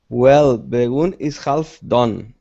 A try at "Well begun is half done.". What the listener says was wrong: Your pronunciation, the sound, this sound should be the same. Begun, done.